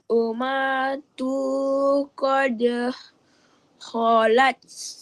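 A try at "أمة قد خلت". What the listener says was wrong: terlupa nak baca wajibul gunnah. Ummatun.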